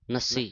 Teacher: ਜਿਹੜਾ ਨਾ ਇਹ ਕਸ ਕੇ ਬੋਲਣਾ ਅਧਕ ਲਾ ਕੇ